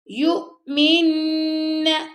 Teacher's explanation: میننا نون پر تشدید، تو یہاں پہ آپ غنہ کریں گے